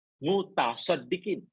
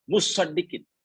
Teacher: Tadi tak ada tak. Taknya diidghamkan pada shad. Ini taknya nampak.